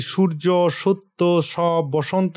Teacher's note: স একটি দন্তশিষ ধ্বনি। এটি জীভের অগ্রভাগকে উপরের পাটির দাঁতের পিছনে রেখে শ্বাসবাহুকে ঘর্ষণ করে উচ্চারণ করা হয়।